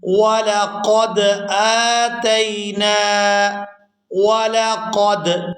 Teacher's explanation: یہاں قاف کو پورا ادا کرتے ہوئے دال ساکن کے ساتھ ملائیں گے۔